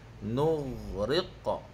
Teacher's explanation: qalqalah dia kena bunyi qa balik